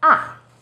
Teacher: sension is even lower it first steps down then rises ah fourth tone position starts high then falls sharply